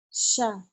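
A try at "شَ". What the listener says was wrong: Sya. Anginnya belum keluar ya. Sya.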